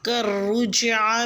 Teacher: کاف کو را سے ملا کے را کو پر پڑھنا ہے اور جیم سے ملانا ہے۔ کررجع میں جیم سے ملا کے جیم ساکن پہ قلقلہ کرنا ہے۔